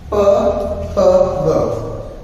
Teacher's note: ਬੁੱਲਾਂ ਦੇ ਨਾਲ ਜਾਂ ਕੋਟੀ ਧੁਨੀਆਂ ਜਿਹਨੂੰ ਅਸੀਂ ਕਹਿ ਕੇ ਚੱਲਦੇ ਹਾਂ ਉਹ ਸਾਡੇ ਕੋਲ ਤਿੰਨ ਹੁੰਦੀਆਂ ਨੇ। ਪ ਫ ਬ, ਜਿਨ੍ਹਾਂ ਦਾ ਉਚਾਰਨ ਕਰਦੇ ਸਮੇਂ ਦੋਵੇਂ ਬੁੱਲ ਆਪਸ ਦੇ ਵਿੱਚ ਜੁੜਦੇ ਨੇ।